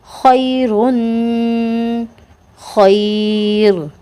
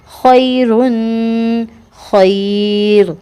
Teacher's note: را ساکن ہے، را ساکن سے پہلے یا ساکن ہے تو اس کو بھی باریک کر کے پڑھیں گے